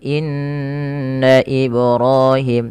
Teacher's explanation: tahan bunyi nun yang bertasydid karena ya gunnah pada ayat ini